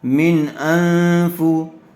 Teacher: نون ساکن کے بعد حروف حلقی میں سے حمزہ آیا ہوا ہے، اس لیے بغیر غننے کے جلد اظہار کر کے پڑھیں گے